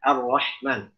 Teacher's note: Jangan hak yang di pangkal. Kita praktekkan hak yang di tengah tenggorokan. Yang ada desahnya. Ar-Rahman. Ya, karena dia sama-sama hams di situ.